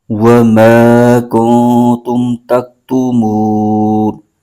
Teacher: کاف پر پیش ہے اور نون ساکن، کاف کو نون کے ساتھ ملائیں گے اور نون ساکن کے آگے حرف تا آ رہا ہے جو کہ حروف اخفا میں سے ہے، یہاں پر اخفا کا قاعدہ ہو رہا ہے، یہاں پر غنہ کر کے پڑھیں گے۔